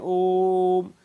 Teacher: पर ओ की ध्वनि को हम लोग लंबा खींचते हैं ओम जितना लंबा हम चाहे उतना लंबा हम उ की ध्वनि को खींच सकते हैं और वहां पर प्लुत स्वर का प्रयोग किया जाता है समझ